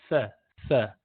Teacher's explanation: Tip of the tongue touching the tip of incisors. Open your mouth a little bit, touch the tip, sa, sa.